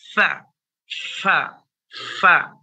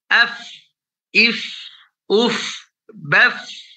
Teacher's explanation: Fa itu makhrajnya kemarin adalah di batadul syafa, ya, bibir bawah bertemu dengan ujung gigi seri atas. Fa. Nah, ketika diucapkan dia ada nafas yang keluar. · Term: hams